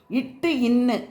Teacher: நாவின் நுனி அன்னத்தின் நுனியை பொருந்துவதால் பிறக்கின்றன